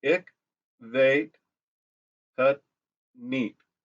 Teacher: with Dutch, the W's have the V pronunciation.